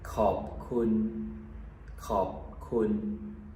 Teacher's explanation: the word khop is a downward tone, and then kun is back to a neutral tone.